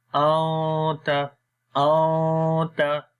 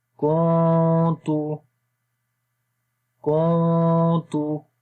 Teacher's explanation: تو جو قانون ہے وہ یہ ہے کہ جب نون ساکن، یعنی جس حرف کے اوپر جزم آئے، سکون کا سائن آئے، اس کو ساکن حرف بولتے ہیں۔ تو جب نون ساکن کے بعد تا آ جائے تو وہاں پر اخفا ہوتا ہے، یعنی کہ نون کی آواز کو ناک کے اندر چھپا کر پڑھتے ہیں